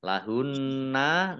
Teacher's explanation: Wala yakhillu lam fathah alif mat tabi'i, lamnya dibaca double karena ada tasdidnya. Lahunna nun tasdid dibaca hunnah atau mendengung, ditahan 2 harokat